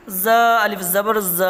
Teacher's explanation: ز الف زبر ز، الف سے پہلے زبر ہے، زبر کو تھوڑا کھینچ کر پڑھیں، معروف پڑھیں، مجہول آواز سے بچیں